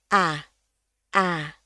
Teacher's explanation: Kita A kita itu cenderung relax, ya, mulutnya, lidahnya semua relax di bawah, bukaan rahangnya tidak besar. Tapi di bahasa Inggris dia rahangnya sedikit lebih turun, ya, lidahnya jadi ikutan kayak perosotan gitu ya. Sebelah belakang itu agak sedikit naik, sebelah depan lidahnya turun.